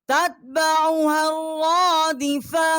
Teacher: ہا کو ہم نے را کے ساتھ مشدد کیا ہے اور ایک الف جتنا جو ہے یہاں پر آواز ہم نے بلند کی ہے